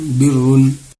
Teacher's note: یہاں پہ رائے مشددہ کے اوپر دو پیش ہے، اس کو بھی پر کر کے پڑھیں گے